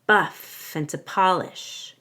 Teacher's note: we link F to n so it sounds like Finn · So when I say buff and to polish, I want to link buff and together so it sounds like buffin', buffin', buff and to polish. I don't need to say and, just in, and we link F to in